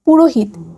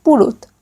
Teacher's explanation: আধুনিক চলিত ভাষায় অনেক সময় দুই স্বরের মাঝামাঝি হকার লোপ পায়। যেমন পুরোহিত, এখানে হকার লোপ পেয়ে হয়েছে পুরুত।